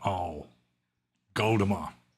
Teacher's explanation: the Burmese pronunciation of the letter O is essentially like AU. It's a diphthong